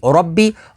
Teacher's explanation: اور را با زبر رب، با زیر بی، اور ربی، را کے اوپر زبر ہے تو را کو پوری یعنی موٹا پڑھیں گے، با کے اوپر تشدید ہے تو تشدید والے حرف کو دو دفعہ پڑھیں گے۔